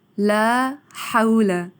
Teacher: ہا کو باریک ادا کیا جائے گا، اور یہ واؤ سے پہلے زبر ہے تو حروف لین ہے، نرمی سے ادا ہوتے ہیں